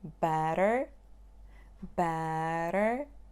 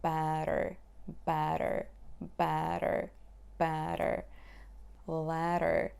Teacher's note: so your tongue is relaxed and when you say better better the tip of your tongue is just flapping the upper palate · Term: front sound